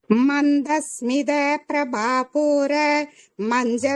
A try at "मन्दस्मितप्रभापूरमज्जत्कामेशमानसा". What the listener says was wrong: மூச்சு விடக்கூடாதுமா, மூச்சு விடக்கூடாது, லைன் ஃபுல்லா சொல்லணும். அது மஞ்சத் கிடையாது, மஜ்ஜத். ஒரு இன்னும் மஜ்ஜத் சொல்லணும்.